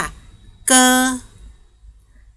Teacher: เสียงโคนลิ้นนะคะเพดาอ่อนก็คือด้านบนนะคะ ตัวGออกเสียงกไก่นะคะออกเสียงว่าเกอ